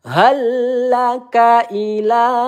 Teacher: Ila kita panjangkan dua ayunan atau empat harakat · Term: mad jaiz munfasil